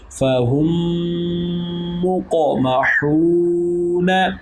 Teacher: قاف حروف قلقلہ میں سے اس لیے یہاں پر قلقلہ ہوگا، اور واو مدہ ہو رہا ہے تو اس لیے اس کو ایک الف کے مقدار کے برابر لمبا بھی کریں گے